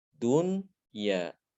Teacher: Ini tidak boleh diidghamkan, tidak boleh dibaca duya. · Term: diizharkan